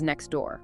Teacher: The T sound just disappears. It becomes next door. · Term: elision